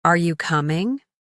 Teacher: Your voice goes up at the end.